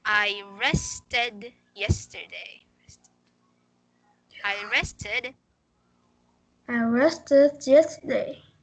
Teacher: have you noticed the sound is id at the end?